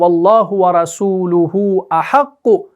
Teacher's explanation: آپ نے اس ہا ضمیر کو کھینچ کر پڑھنا ہے